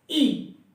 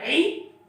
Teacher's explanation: حمزہ کو منہ کی خلا سے، عین کو حلق سے دبا کے